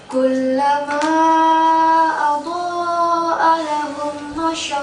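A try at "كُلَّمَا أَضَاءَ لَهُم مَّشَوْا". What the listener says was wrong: Nah, ada mim mati berjumpa dengan mim? Tahan suara. Tadi dah nahan belum? Tahan lagi.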